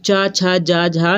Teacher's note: च छ जा झा यह सभी आपके तालब से बोले जाते हैं